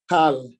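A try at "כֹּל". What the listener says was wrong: Kol. no metek here. If there's metek here, to be kal, but this is kol.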